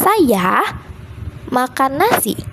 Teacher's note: Saya makan nasi menekankan pelaku bukan orang lain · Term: penekanan